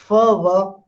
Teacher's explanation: lower lip, upper teeth, and I am releasing the air. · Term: fricative